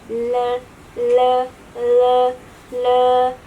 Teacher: daun lidahnya itu tidak digigit sehingga udaranya bisa keluar dari samping, dari sebelah sini.